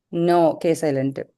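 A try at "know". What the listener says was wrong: கே மட்டும் கிடையாது. Look at that. W சைலண்ட். நோ. W சைலண்ட். நோவையும் ஒரே மாதிரி உச்சரிக்கணும். விச் மீன்ஸ் கேவும் வேண்டாம் டபிள்யூ வேண்டாம்.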